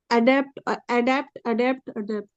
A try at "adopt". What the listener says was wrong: अडॉप्ट पढ़ना, डेप्ट नहीं।